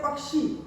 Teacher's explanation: अब क्ष, जैसे हम बोलते हैं पक्षी, क्ष बोलते हैं तो प, क की आवाज भी आ रही है, श की आवाज भी आ रही है। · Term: संयुक्त व्यंजन